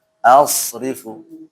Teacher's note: Shotnya jangan mantul dan dia tebal.